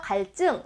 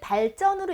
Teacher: 한자어에서 리을 받침 뒤에 연결되는 디귿, 시옷, 지읒은 된소리로 발음을 합니다